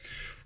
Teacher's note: غنة فوق الميم لأن عليه شدة، وفوق النون لأنها متبوعة بطاء، هو من حروف الإخفاء.